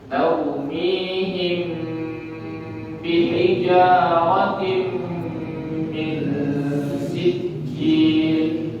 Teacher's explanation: Maka ikhfa syafawi sempurnanya itu dibaca dengan bibir tertutup. Taumihim bihijaratin min sijil.